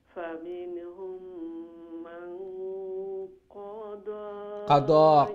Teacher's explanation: কাফ short قضى দোয়াত খাড়া জবর লং হইব